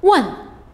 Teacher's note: the fourth tone the falling tone